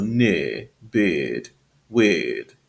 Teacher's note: In Southern Standard British English, we have a lengthened I sound.